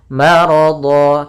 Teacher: Mad iwad yaitu terjadi ketika adanya huruf yang berharakat fathatain bertemu dengan huruf akhir di akhir bacaan kita. Maka ini berubah menjadi panjang, bukan lagi maradhan tapi menjadi maradha sebagaimana mad tabi'i. Dan itu ketika kita wakaf.